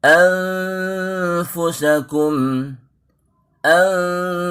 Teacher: satu-satunya ikhfa yang tidak melibatkan huruf lidah. Karena fa sendiri adalah huruf yang keluar dari bibir. · Pada saat ikhfa di gigi seri kita sudah menyentuh bibir bawah lembut. Anfu, bersiap-siap ke makhraj fa.